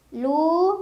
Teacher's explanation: karena ada wau sukun sebelumnya damah dibaca panjang juga dua harakat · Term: Mad Thobi'i